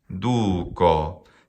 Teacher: Du has a long vowel in it. Well, that makes it a long syllable if there's a long vowel in the syllable. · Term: spandi